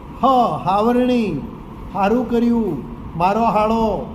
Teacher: મધ્ય ગુજરાતમાં સ નું ઉચ્ચારણ અઘોષ હ તરીકે થતું હોય